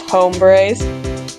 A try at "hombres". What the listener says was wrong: What are you pronouncing the H in hombre?